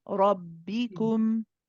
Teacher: The fatha needs to be complete, and it's a heavy ra.